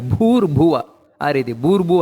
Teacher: ಇಲ್ಲಿ ಮಹಾಪ್ರಾಣ ಇದೆ ಅದನ್ನ ಒತ್ತು ಕೊಟ್ಟು ಹೇಳಬೇಕು